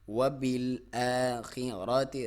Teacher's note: را کو موٹا، تا کو باریک